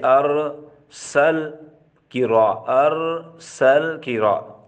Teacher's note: اس حرف کو ادا کرتے وقت زبان پر ایک قسم کا لرزہ یعنی کپ کپی سی پیدا ہو جاتی ہے، جس کی وجہ سے تکرار محسوس ہوتا ہے، اس وجہ سے اس صفت تقریر کو صفت تقریر کہا جاتا ہے۔